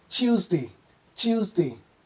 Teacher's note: in British English, the T softens to a CH sound, reflecting a chi sound. So here, we pronounce this in British accent as Tuesday, Tuesday.